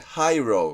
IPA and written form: haɪroʊ (Hiro)